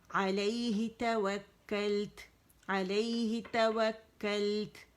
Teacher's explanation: لام پہ زیادہ نہیں رکنا ہم نے, ایک کاؤنٹ کے لیے